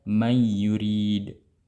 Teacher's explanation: Ya, idghamkanlah, masukkanlah ya, dan hapuslah atau buanglah nun secara sempurna ya, wa'ti bi gunnah, dan jangan lupa dengan disertai gunnah